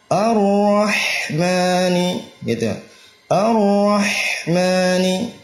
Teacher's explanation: Ya, ra-nya tebal ya, dan getarannya itu cuma satu getaran, ar-ra ya. Kemudian ha tipis dan rakhawah.